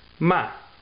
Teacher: fourth tone I guess you could say it starts high and goes down sharply